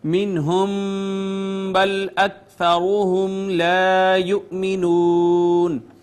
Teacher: حمزہ کو تھوڑا جھٹکے سے پڑھیں گے · میم ساکن کے بعد با آ گئی، اخفاء شفوی ہے ، اس کے بعد را مدموم ہونے کی وجہ سے مفخم · نون ساکن کے بعد حرف اظہار ہا ہے، نون پہ اظہار ہوگا ، میم ساکن کے بعد با آ رہی ہے، منہم بل